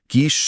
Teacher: श बोलते समय हवा तालू से रगड़ खाती है।